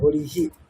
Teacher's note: বিসর্গের পরে বিসর্গের জায়গায় হ আসছে আর ইকার আসবে। তাহলে হরিহি।